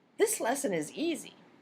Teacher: The speaker says, this lesson is easy, with the natural focus on the last word in the sentence.